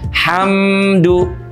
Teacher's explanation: huruf mimnya itu ditahan posisi bibirnya ham jangan dilepas dulu sebelum bunyi duya keluar.